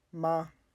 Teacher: the first tone is a high sustained tone